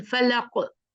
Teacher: फलक, रुक गए ना, तो हमने क्या किया? उस पे कलकला किया